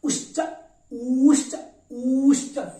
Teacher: उश्च एक मात्रा कालिक ह्रस्व, ऊश्च द्विमात्रा कालिक दीर्घ, और ऊश्च त्रिमात्रा कालिक प्लुत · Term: ह्रस्व दीर्घ प्लुत ऊकार